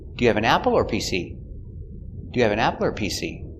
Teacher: is an information question with an option apple or pc so the intonation goes up before or and down at the end